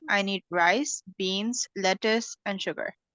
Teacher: so you'll be putting less emphasis on sugar okay because that's the last word